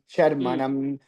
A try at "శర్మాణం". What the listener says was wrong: ఆ శర్మ దీర్ఘం అండి